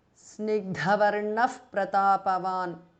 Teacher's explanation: Samavibhaktangas Snigdhavarnaha because of Sandhi. Visarga changes to Upadhmaniya. Pratapavan, Snigdhavarnaf Pratapavan because of Sandhi.